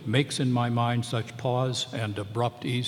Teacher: two unstressed syllables followed by two stress so that fills out the five stress line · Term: metrical variations